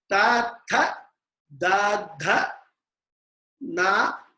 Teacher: dentals, that is the tongue touching the upper teeth, inside of the upper teeth